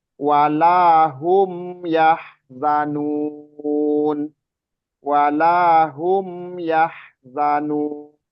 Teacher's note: kan apa namanya bainiah ya ketika dia sukun bainiah Maksudnya di bainiah itu setengah mengalir sedikit aja mengalir ketika dia disukunkan Suaranya maksudnya suaranya mengalir sedikit W Hum yahzanun W Hum yahzanun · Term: Izhar Syafawi